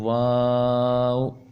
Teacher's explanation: वा यह दोनों होठों की गोलाई से अदा होता है